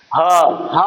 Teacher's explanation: कंठ से सीधा हवा बाहर चली जा रही है